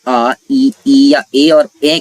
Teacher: आपके मुंह होंठ जो है वो वृत्ताकार ना होकर के खुल जाएंगे या विवृत आकृति प्रदान कर लेंगे